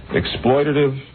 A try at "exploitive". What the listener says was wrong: Isn't it exploitive, not exploitative? I think he added a syllable.